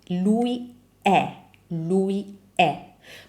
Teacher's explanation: When we say is, the E is open.